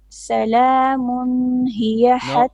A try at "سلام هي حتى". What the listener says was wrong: No. Salamun. No, don't make too much ghunna. It's only 1 beat. Salamun. Because this is hard.